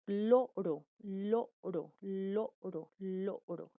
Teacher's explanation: el aire se sale por los lados del palatar. Sí, por este lado y por estos lados, superiores o costados. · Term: laterales